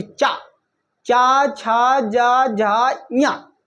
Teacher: जब चा बोलेंगे तो हमारी जो जीवान है वो ऊपर जाके तलु में लगेगी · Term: चा वर्ग